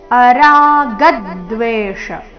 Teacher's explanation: ಗದ್ ಗ ಮೇಲೆ ದ ಆಘಾತ